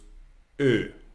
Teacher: E like in end. O umlaut, it's like you put your mouth like O, but you want to say E